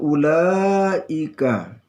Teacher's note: ini ada mat wajib muttasil, panjangnya 2,5 alif atau 5 harakah